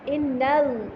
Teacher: अच्छा, इसमें पढ़ते हुए एक चीज़ का ख्याल आपने रखना है, वो ये कि लाम को मोटा करने के सिलसिले में आपने पीछे वाले हर्फ को मोटा नहीं करना। अक्सर स्टूडेंट्स क्या करते हैं कि नून भी मोटा हो जाता है, इन्नल्लाह ऐसे पढ़ने लगते हैं।